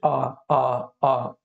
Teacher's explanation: कंठ से बोले जाते हैं। जैसे आ, आ, मुंह खुला है, लेकिन ध्वनि कहाँ से आ रही है? कंठ से आ रही है।